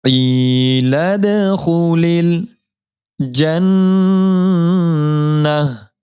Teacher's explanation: لام کو اگلے والے جزمہ والے لام کے ساتھ ملائیں گے. لام زیر لل, الف کو درمیان میں نہیں پڑھیں گے.